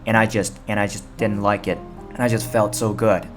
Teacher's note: just 在动词前面，它经常不会发出那个 t